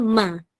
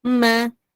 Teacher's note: Perasan tak kita selama ni kita sebut ma tu sebenarnya dia dah ada gunnah. Gunnah semula jadi pada huruf tu.